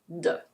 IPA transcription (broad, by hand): d